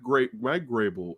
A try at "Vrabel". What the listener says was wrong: Vrabel. Vrabel. How always go with the G? Vrabel. Vrabel.